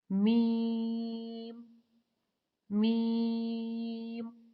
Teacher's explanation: यह बारीक हर्फ है मीम को को अदा करने के लिए होठों के खुश्क हिस्से को कदर नरमी से मिलाकर बारीक आवाज में पढ़े · میم کو ادا کرنے کے لیے ہونٹوں کے خشک حصے کو قدرے نرمی سے ملا کر باریک آواز میں پڑھیں۔